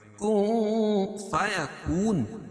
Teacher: نون ساکن کے بعد حروف اخفا کے 15 حرفوں میں سے فا ہے، تو یہاں ناک میں آواز کو چھپا کر پڑھیں گے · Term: اخفا حقیقی